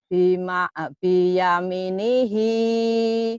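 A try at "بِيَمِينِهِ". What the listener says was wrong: Bi-nya kan panjang buat dia mati.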